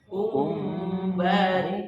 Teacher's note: kalau untuk mim ketemu ba itu wajib direnggangi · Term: ikhfa syafawi